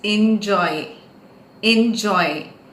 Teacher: Joy the syllable is to be stressed